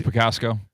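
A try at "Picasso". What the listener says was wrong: I mean, you added an extra like consonant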